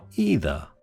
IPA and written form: ˈiː.ðə (either)